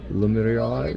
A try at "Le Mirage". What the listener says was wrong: Le Mirage. Le Mirage. You gotta roll your R, like Le Mirage. Mirage.